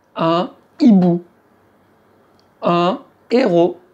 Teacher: tu ne prononces toujours pas le H, mais tu n'as plus le droit de faire la liaison. Liaison interdite. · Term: H aspiré